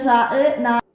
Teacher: സ നാവിൻ്റെയും മേലെ മുൻപല്ലുകളുടെയും തലയും, ഇവിടെ നിന്ന് കാറ്റോടുകൂടി പുറപ്പെടുന്നു